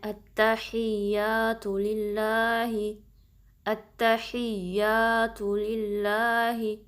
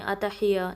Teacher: आपने हमज़ा को पहले ता से कनेक्ट करना है, ठीक है। और यहाँ पे ता पे तशदीद है, थोड़ा टाइम देंगे, और या पे भी तशदीद है तो इसको मिस नहीं करना · ऐसे नहीं पढ़ना कि जो तशदीद है उनको आप ड्रॉप कर दें, अतहिया नहीं।